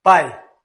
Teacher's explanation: pai já é a vogal anterior, ela é mais forte. Aqui você não fala pai, é pai. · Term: ditongos decrescentes